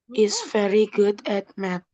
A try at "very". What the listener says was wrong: Very. V-nya bunyinya seperti F. Nggak boleh sama dengan F. Beda. Huruf V itu pita suara kita bergetar very. Bukan very. Kalau very itu alat transportasi.